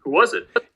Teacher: The break here between these 2 words is more here. And there's no co-articulation happening across this word boundary. It's clearly a voiced z followed by an I.